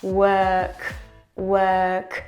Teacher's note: Inside of a work, we have a long schwa. · And it's not, so we're not raising the tongue, it's just flat and we're breathing out. Inside of it, work, we have a long schwa. Work, work.